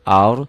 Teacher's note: rohnya dibaca tebal karena sebelum roh mati baris di atas